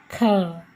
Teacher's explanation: हवा थोड़ी सी ज़्यादा निकल रही है, ख ऊर्जा भी ज़्यादा लग रही है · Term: महाप्राण